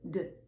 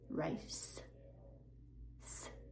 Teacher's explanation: And rise, z, voiced. Race, s, no voice.